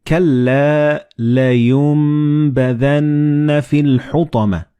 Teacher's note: the noon and ba, when they follow one another in the same word, you don't pronounce noon or ba, but you pronounce meme. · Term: assimilated together